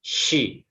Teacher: huruf shin ini dia punya sifat tafashi atau menyebar ketika diucapkan